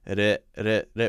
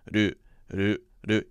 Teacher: So it's two syllables and it's this sort of rolling R sound that replaces the L sound